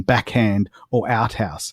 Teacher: th and kh are aspirates that is a t or k followed by an h